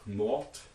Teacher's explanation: in isolation you get a voiceless stop at the end of them. But if you put an affix on them, in this case the plural schwa, they instead surface as voiced.